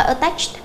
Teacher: Attached đầu tiên chúng ta sẽ phát âm là ơ